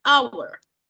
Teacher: Esa H no tiene ningún motivo de ser ahí en sonido o pronunciación. Hour. Nosotros pronunciamos o escuchamos una A al inicio.